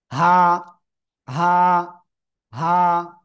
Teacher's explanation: গলার শুরু থেকে অক্ষরটা উচ্চারিত হবে। আর এক আলিফ টান হবে।